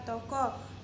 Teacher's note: O, ciri-ciri tengah belakang bulat, contoh kata toko.